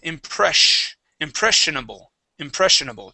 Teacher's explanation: This S is going to be a SH sound.